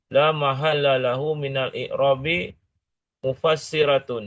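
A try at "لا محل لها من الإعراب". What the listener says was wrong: Mana lahu? Ini laha ada alifnya.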